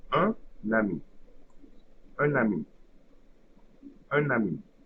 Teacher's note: when the first word ends with N, it will create an abstract N at the beginning of the second word. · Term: liaison